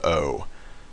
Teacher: you're not sort of moving into a different vowel as you say it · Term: pure sound